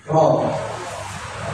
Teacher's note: Huruf ro ini makhrajnya itu di ujung lidah, terus nempel di langit-langit mulut yang bagian tengah. Ro, bukan depan ya, bukan depan.